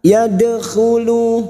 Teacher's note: Dal sukun Qalqalah sugro yang mati asli di tengah kalimat huruf Dal yaitu huruf Qalqalah kita pantulkan